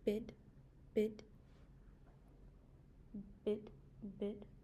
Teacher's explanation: the mandible doesn't really lower, which is why it is a high vowel